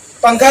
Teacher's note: جیسے یہاں اردو میں پنکھا کہتے ہیں، اردو میں پنکھا کہتے ہیں نا، پنکھا کے نون کی آواز کو ہائٹ کر دیتے ہیں، چھپا دیتے ہیں۔